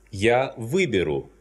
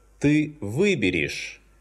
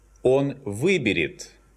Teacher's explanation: When a perfective verb contains the prefix вы, this prefix is always stressed.